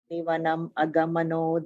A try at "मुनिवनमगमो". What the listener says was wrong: in the fourth line, the Muni Vanam Agamo, you are adding an extra na somewhere. Muni Vanam Agamo.